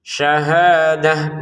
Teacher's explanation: Hnya dua harakat panjangnya. Untuk t-nya di sini kita baca ha karena berhenti.